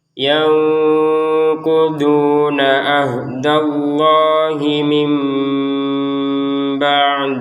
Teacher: langsung aja na nyambung ke ain dan langsung ke lafal Allahnya. Itulah yang disebut sebagai lancar.